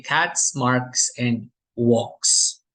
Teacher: in the case that prior to the S sound are all voiceless sounds then these refer to the authentic s sound